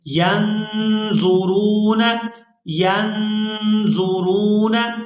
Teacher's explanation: یہاں نون جو ہے ساکن ہے اور اس کے بعد حروف حلقی میں سے کوئی حرف نہیں ہے، تو یہاں اخفا کریں گے، آواز جو ہے ناک کے اندر جائے گی اور اس کو 2 سے 3 سیکنڈ کھینچیں گے